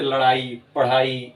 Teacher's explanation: जब आप उच्चारण करेंगे तो आपकी जीभ तेजी से ऊपर जानी चाहिए, फिर तेजी से नीचे आनी चाहिए, तब जाके इसका उच्चारण हो पाएगा ड़ ढ में। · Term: द्विगुण व्यंजन